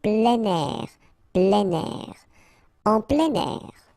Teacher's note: Alright, so you've got this air here, and then we tend to make the liaison plein air